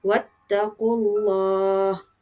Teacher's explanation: lam dalam kalimah Allah itu, kita ni hendaklah menebalkan bunyi lam itu disebabkan ataupun oleh kerana huruf sebelumnya ada berbaris di atas ataupun berbaris di depan. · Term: lam tafkhim